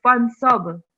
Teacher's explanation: So we're giving a jerk to this ba with sakoon on top. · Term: kalkala rule